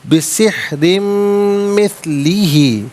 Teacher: ناظرین را کے نیچے دو زیر کی تنوین ہے، باریک کر کے پڑھا جائے گا، اور دو زیر کی تنوین کو مثلی کی میم کے ساتھ ملا کر میم کی آواز کو غننے کے ساتھ ادا کریں گے۔ یہاں یرملون کا قاعدہ اپلائی ہوگا۔